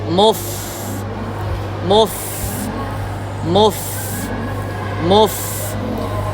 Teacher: tetap disempurnakan damah pada mim ya jadi dia tetap ke depan dulu